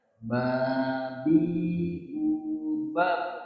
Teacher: Nah, ini qalqalah. Ba sukunnya kita pantulkan.